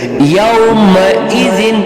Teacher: اب یہ زال نرم حروف میں سے ہے، زبان کی نوک سے اس کو ادا کرنے کی کوشش کریں گے۔